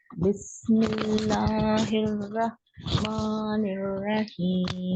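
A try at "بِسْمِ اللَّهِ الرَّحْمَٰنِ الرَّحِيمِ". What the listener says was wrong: झटका नहीं देना, हिर्रा झटका नहीं वहां पे, हिर्रा बहुत आसानी के साथ मिलाना।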